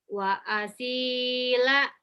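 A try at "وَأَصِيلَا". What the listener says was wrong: Panjang ujungnya.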